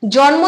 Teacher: যখন আমরা জন্ম উচ্চারণ করছি তখন ন এর সঙ্গে কিন্তু কোন স্বরধ্বনি আসছে না